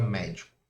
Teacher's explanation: Por exemplo, se eu falo a palavra médico e eu separo a sílaba da palavra médico, a sílaba mais forte recai nessa antipenúltima sílaba aqui. Então ela é uma palavra proparoxítono.